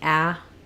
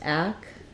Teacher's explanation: so it's first syllable stress we have the ah vowel